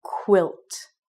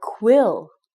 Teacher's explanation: you always are very, very strong in your pronunciation about the T sound at the end of the word. Because if you don't, it could sound like this letter, or this word, quill.